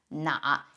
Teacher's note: the first character usually gets pronounced in Chinese as na instead of N